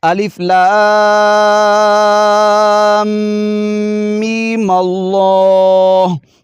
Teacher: میم پر غنہ تو ضرور کریں گے لیکن آگے مد نہیں کریں گے، تو آگے لفظ اللہ کے ساتھ ملا دیں گے۔